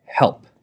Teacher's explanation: the p so it pops in this area at the beginning at the end of it we don't have the uh sound so it's not pa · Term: lip popper sound